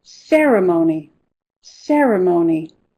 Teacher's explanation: The stress is on the first syllable, and it's a red word.